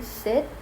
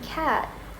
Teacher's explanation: high vowels like e in sit are usually shorter than low vowels like a in cat